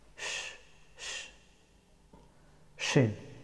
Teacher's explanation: The letter of shin pronounced from center of the tongue and straight up.